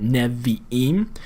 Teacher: We can hear that vocal Shiva, that short, hurried nevi'im